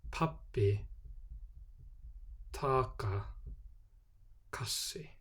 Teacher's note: At the start of a word, the letters P, T and K are pronounced with aspiration, or a small puff of air after the consonant sound.